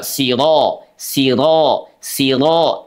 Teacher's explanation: pada saat kita membaca huruf ro, ro-nya dalam keadaan fathah, dia dibaca menebal.